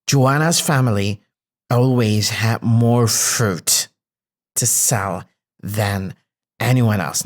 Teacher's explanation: I stressed a bit more had because it's a main verb. So it comes here as not as an auxiliary verb, but as a main verb, to sell than anyone else.